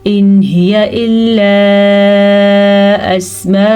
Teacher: इन हिया नून साकिन के बाद हरूफ हल्की में से हा आया हुआ है तो नून साकिन को हम जाहिर करके पढ़ेंगे। यहाँ पे किसी किस्म का कोई गुन्ना इख्फा नहीं होगा, जैसा लिखा है ऐसे ही पढ़ेंगे। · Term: इजहार